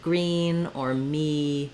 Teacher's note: in words like green or me my mouth my tongue doesn't have to move at all on the vowel sound